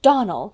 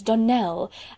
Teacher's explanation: Accent on the last syllable